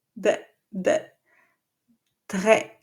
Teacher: as soon as the tip of the tongue goes down, the back of the tongue goes up towards the uvula